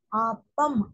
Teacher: சொல்லுவோமா ஆப்பம் எப்படி சொல்லுவோம் ஆப்பம் அப்ப ரெண்டு உதடு ஒட்டுதா அதான் சோ மேல் இதழும் கீழ் இதழும் பொருந்துவதால் பிறக்கும் எழுத்து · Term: இப்பு இம்மு